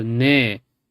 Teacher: This is tone 6, but it gets compressed to ne with a rising tone.